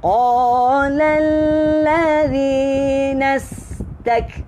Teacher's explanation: Huruf kaf tak lantun. Angin aja, angin.